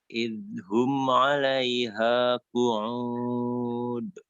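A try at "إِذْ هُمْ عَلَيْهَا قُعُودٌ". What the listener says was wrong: Idhum jangan dulu dipindah lidahnya ya. Jangan dulu dipindah sebelum selesai mengucapkan huruf dzal dan sebelum siap-siap mau mengucapkan huruf ha ya.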